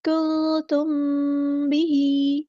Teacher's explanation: नून साकिन की आवाज़ को हम यहाँ छुपा देंगे, इख़फ़ा होगा।